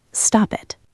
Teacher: Now imagine the P at the end of stop moves over to the word it. It sounds like stop it.